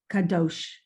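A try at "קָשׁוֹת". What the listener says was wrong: No, here, a shin, yeah, Kashot.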